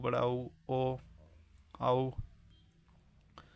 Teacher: वृत्तमुखी में जिन स्वरों के उच्चारण में ओठ गोलाकार होते हैं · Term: वृत्तमुखी स्वर